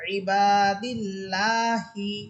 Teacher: আচ্ছা, এরপরে শব্দ আইন সের ই, বা আলিফ সবর বা, ইবা, দাল লাম সের দিল, ইবাদিল, লাম খারা সবর লা, হাসের হি, ইবাদিল্লাহি। এখানেও আল্লাহ শব্দের পূর্বে দাল হরফের নিচে আছে জের, এই জন্য আল্লাহ শব্দ এটা চিকুন করে আমরা পড়তেছি